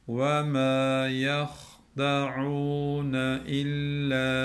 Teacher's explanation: Bundan sonra gelen dik bir hemzemiz var. Onun için illa diye uzatıyoruz.